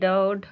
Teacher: जिनके उच्चारण में जीभ की नोक झटके से तालु को छूकर वापस आ जाती, उन्हें उच्छिप्त कहते हैं, मतलब उठा हुआ, उछला हुआ, ठीक है।